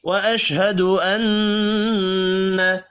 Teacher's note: نون مشدد پر غنہ کریں گے